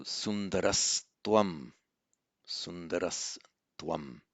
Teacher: visarga to s by reason of the following t